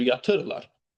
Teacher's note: Ahəng qanununa tabe olan bu sözdə vurğu birinci hecaya düşmür. Bəli, ikinci hecaya düşür.